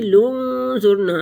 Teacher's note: لنظرنا، نون ساکن پیچھے ملے گی اور 1 ہی دفعہ پڑھی جائے گی۔ لنظرنا، نون ساکن کے بعد حروف اخفاء میں سے آ گیا تو یہاں اخفاء کریں گے، 2 حرکت کے برابر ناک میں آواز کو چھپائیں گے